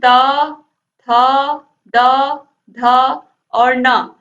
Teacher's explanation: तो ये ता वर्ग को दंत व्यंजन कहते हैं